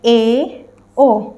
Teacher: इन स्वरों के उच्चारण में मुह आधा बंद रहता है